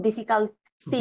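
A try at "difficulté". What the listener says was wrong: ডিফিকুলতে হ্যাঁ ইউকে কখনোই আ বলা যাবে না ইংরেজির মতো হ্যাঁ ডিফিকাল্ট আ না সবসময় ইউ হচ্ছে উ মানে রস্যু বাংলাতে বললে রস্যুর মতো বা রস্যুকার হ্যাঁ সাউন্ড হবে অলওয়েজ চেঞ্জ হবে না ওকে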